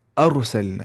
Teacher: राय साकिन से पहले जबर है, पेश है, तो रा को पुर पढ़ रहे हैं।